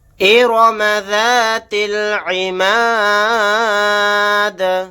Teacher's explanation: آیت کرنے کی صورت میں دال کو ساکن بنا دیں گے، دال ساکن ہوگا تو یہاں پر قلقلہ بھی ہوگا۔